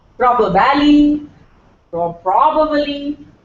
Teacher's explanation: The word is pro, and the stress is on pro.